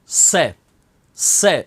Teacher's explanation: जीवा दांतों को स्पर्श करती है और शीटी निकलती है, से, इसलिए इसको दंत्य से कहते हैं।